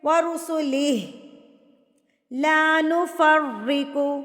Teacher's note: را پہ تشدید ہے، زور سے پڑھیں اس کو، زور دے کے شدت سے. لا نفرق بین، اب یہاں پر جو عموماً مسٹیک کرتے ہیں بے نہ پڑھے ہوتے ہیں نا، بے نہیں ہے یہ بئی ہے.